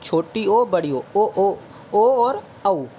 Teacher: कंठ प्लस ओष्ठ माने होठ, गला और होठ से बोलने वाला स्वर जो है वो छोटी ओ बड़ी ओ और औ। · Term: कंठ और ओष्ठ